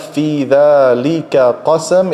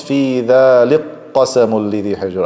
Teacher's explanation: I merge the kaf into the qaf. And we said big merging just means the first one already has a harka, so I have to switch it to sukoon, then merge it.